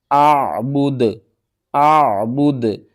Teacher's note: دال کو ساکن کریں گے اور دال کے اوپر قلقلہ بھی کریں گے